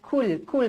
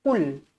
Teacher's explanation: bezakan huruf qaf dengan huruf kaf. Huruf kaf lembut. Huruf qaf tebal.